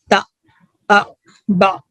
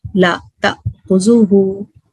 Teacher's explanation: اسے جیسے اسی کو گلوٹل سٹاپ کہتے ہیں, کیونکہ جو ووکل کارڈ ہے نا وہ ایک جھٹکے کے ساتھ بند ہوتی ہے. تو یہ یہاں سے حمزہ ادا ہوتا ہے.